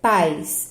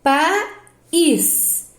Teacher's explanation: Em pais, esse ai é ditongo. Agora, em país, ele se separa, então aqui é hiato, não é ditongo.